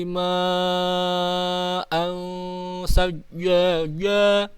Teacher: ma itu panjangnya 5 mad wajib muttasil